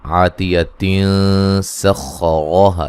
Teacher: جب ہم ملا کے پڑھیں گے تو نون تنوین کا اخفا ہوگا